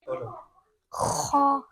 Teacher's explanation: Make sure there's air coming out. Okay, middle part of the throat. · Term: throat letter